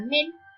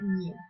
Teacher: Diptongación de E breve tónica latina. Evoluciona a IE en castellano. Ejemplo, tenemos aquí en latín la palabra mel y en castellano la palabra miel.